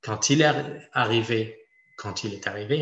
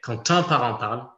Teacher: Pour quand, dans une phrase affirmative, cette fois-ci, donc là c'est différent de la question, quand dans une phrase affirmative va produire une liaison obligatoire